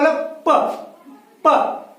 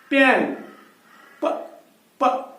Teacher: तो हमने पहले बोला प, मैंने दो होंठों को आपस में मिलाया, I touch it to my lips to produce sound pen.